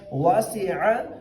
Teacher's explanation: عین کو گلے سے نکالنا ہے اور یہاں پہ عین کو کچھ لوگ حمزہ سے تبدیل کر دیتے ہیں، تو یہاں پہ ہم نے عین کی آواز وسط حلق سے نکالنی ہے